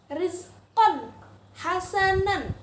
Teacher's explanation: Tanwin bertemu dengan huruf ha. Harus dibaca dengan jelas, terang, tidak boleh berdengung. Rizqon hasanan, bukan rizqon hasanan.